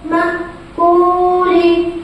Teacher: جزم والے حرف کو پیچھے والے حرف سے ملا کر پڑھیں گے. حمزہ کے اوپر جزم ہے اس لیے اس کے پڑھنے میں جھٹکا ہوگا